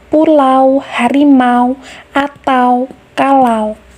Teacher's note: Vokal A sebagai vokal pertama merupakan vokal rendah tengah tak bundar atau vokal yang direalisasikan dengan posisi struktur terbuka. Artinya, posisi lidah berada pada posisi yang rendah atau memiliki jarak jauh dengan artikulator pasif. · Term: diftong au